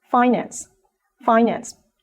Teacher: a noun as a verb the second syllable is stress financed when it is a noun the first syllable receives the stress